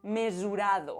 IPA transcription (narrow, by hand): me.zu.'ɾa.ðo